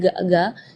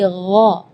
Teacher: Di ayat ini yang pertama di makhraj huruf ghain ya, ghairil maghdubi ya, perlu diperhatikan bukan G, bukan huruf G ya, bukan ga, tapi gha. Jadi kalau ga itu dia makhrajnya dari lidah. Ya, tapi kalau huruf ghain itu dari bagian tenggorokan ya.